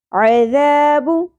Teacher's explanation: عین وسط حلق سے ادا کرنا ہے